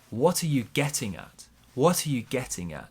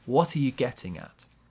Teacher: Small stress on what, big stress on getting.